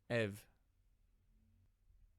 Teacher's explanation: Koine and modern pronounce the upsilon as v, just like we saw in the diphthong with alpha upsilon, ev.